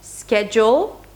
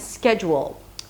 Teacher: there are actually two ways to pronounce this word: SKE-j'l - two syllables, and SKE-juw-w'l - three syllables